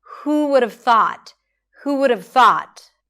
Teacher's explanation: And notice that she doesn't say 'who would have thought'. She doesn't separate every word, she doesn't fully pronounce every word, everything is reduced